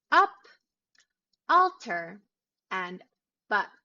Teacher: when you're using the british accent pronouncing the ah sound would require your mouth to be a little bit more open